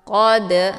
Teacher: cara bacanya dalnya dipantulkan dengan pantulan ringan [Musik] dibacanya secara dialirkan jadi jangan ditekan sehingga keluar bunyi pantulan